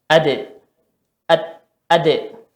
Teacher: Da. Ketika dia sukun kita tarik lagi ujung lidahnya, keluar suara pantulan. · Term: qalqalah